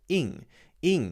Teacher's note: It's actually the long E sound with the ing happening at the back of your throat.